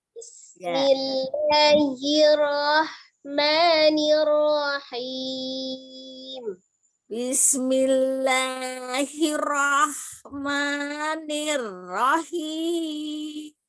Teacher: huruf ro itu memiliki sifat takrir atau getar, tapi cukup sekali ya